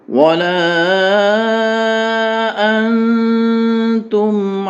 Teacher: نون پہ اخفا ہوگا، اخفا سے مراد ناک اور منہ دونوں میں آواز روک کر رکھنے کو کہا جاتا ہے